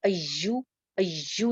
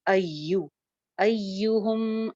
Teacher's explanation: اس کا مخرج جو ہے وہ منہ کا خالی حصہ ہے، آپ کی جو زبان کا سینٹر ہے وہ اوپر والے جا کے پیلٹ پہ تالو پہ لگتا ہے اور زبان دانتوں میں نہیں لگتی